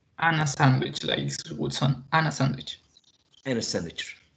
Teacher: we can have a linking between the consonant sound n and the vowel sound